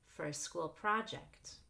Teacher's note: we actually just stress projects for a school project